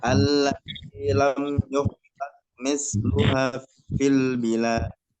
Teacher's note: Misluha panjang 2 harokat.